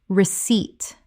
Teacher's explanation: The P is completely silent. 2 syllables with the stress on the second.